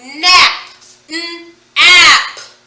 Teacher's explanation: I hear one vowel sound. That vowel sound is ah. It's a short vowel